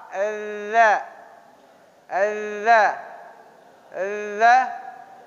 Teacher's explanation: Ujung lidah kita digigit gigi atas sama gigi bawah. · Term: huruf za